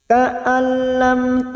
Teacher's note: nun sukun bertemu lam Idam Bila gunah masuk P huruf lam tanpa mendengung tanpa ditahan lama-lama